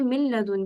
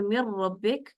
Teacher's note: लाम का मखरज होगा और कामिल इदगाम होगा, इसमें और गुन्ना नहीं होगा, बिला गुन्ना है ये